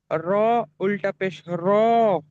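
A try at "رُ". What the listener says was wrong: র নয়, রু।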